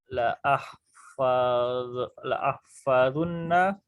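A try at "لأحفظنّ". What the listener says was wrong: Nah, baris fathah terakhirnya. Kalau bersama nunut taukid, baris fathah akhirnya. bukan, baris fathah. Bukan zu tapi zo. La ahfadhanna surat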